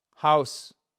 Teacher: Alors non seulement vous prononcez le H, il est expiré en fait. Comme si vous souffliez un peu, voyez, vous soufflez sur une vite pour faire de la buée house, mais c'est pas on ne s'époue pas non plus, hein.